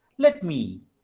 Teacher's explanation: let has less stress, me has more stress. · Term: unaccented, accented